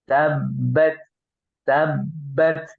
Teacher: tab ya dengan menempelkan kedua bibir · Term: tasdid